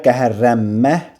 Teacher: Yəni ki, L Rya çevrildi. N-dan sonra BMP samitləri gəlmə məsələsinə görə Nm-ya çevrildi. K da i hissəsi ilə əvəz olundu. · Qəhər L keçir R-ya, N keçir M-ya, Qəhərrənmə kimi bir tələffüs yaranır.